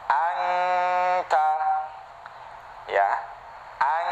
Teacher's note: dengungnya itu, gunahnya itu ya, itu keluar dari khoisyum, keluar dari rongga hidung. Maka harus hidung kita jangan dipampetin.